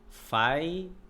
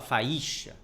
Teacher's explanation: Perceba que o A é mais forte que o I. Você coloca mais força, né? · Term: decrescente